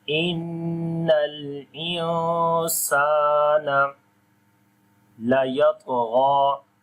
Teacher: On the ta and ghain we read in heavy sound, and on the ta we also make qalqala, which is weak qalqala, as the qalqala letter is coming with sukoon sign in the middle of the word.